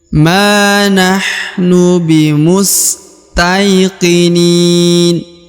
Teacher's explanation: perhatikan huruf Ma dibaca Dua harakat ma karena ada Alif ya di depannya